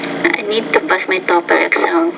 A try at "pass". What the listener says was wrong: I need to pass. Again, you need to pronounce that P with more air.